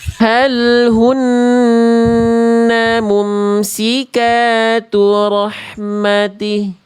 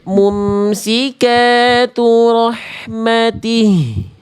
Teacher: Dibaca kurang mengalir nafas dan suaranya atau sering kita sebut dengan khofa. Dia enggak jelas bunyinya.